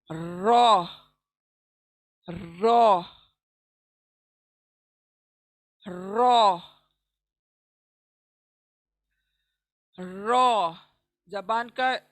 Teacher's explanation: जबान के पीछे का हिस्सा और ऊपर सामने के दांतों के मसूड़े, इनको लगने से रॉ अदा होगा। और रॉ याद रखें, जैसे जैसे मैं कुछ मतलब आसानी होती है बताते जाऊंगी इंशाल्लाह।